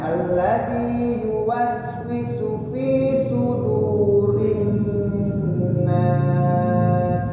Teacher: Alladzi yuwaswisu fi-nya panjang ya, 2 harokat. Fi sudu. Jadi yang dua harokatnya yang diayun adalah di fi dan di du. · Jadi yang dua harokatnya yang diayun adalah di fi dan di du. Di su-nya jangan ya.